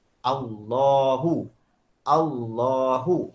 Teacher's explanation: Lam pada lafaz jalalah dibaca dengan tebal. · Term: lam tafkhim